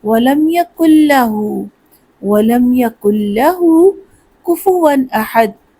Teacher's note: جو ہا ہے اس کے اوپر الٹی پیش ہے تو اس کو تھوڑا سا لمبا کرنا ہے، وَلَمْ يَكُلْ لَهُ، وَلَمْ يَكُلْ لَهُ كُفُوًا أَحَدٌ۔